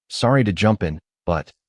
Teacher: Notice how jump in links together. It becomes jumpin. This makes the interruption flow smoothly.